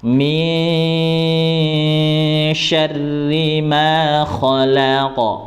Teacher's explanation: didengungkan terlebih dahulu, kemudian sambil diarahkan ke huruf sya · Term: dengung ikhfa